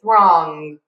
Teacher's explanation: where I was raised, we say a really strong ng at the end of the word. So, sometimes I still do this and I'll say throng and I'll add like an extra guh there.